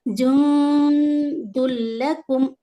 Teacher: نون ساکن کے بعد دال، یہاں پر اخفا میں ہم 2 حرکت یہاں پر ٹائم دیتے ہیں 2 سیکنڈ ہے نا. نون کو ناک میں چھپا کر پڑھیں گے. جند لکم اور دال کے اوپر تنوین ہے، یعنی سوری ضمہ تین ہے، تو اس کو لام میں ملائیں گے اور ادغام بلا غنہ، یہاں پر ٹائم نہیں دیں گے، بالکل جلدی پڑھیں گے.